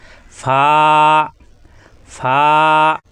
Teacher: উপরে দুই দাতের আগা নিচের ঠোটের পেটে লাগবে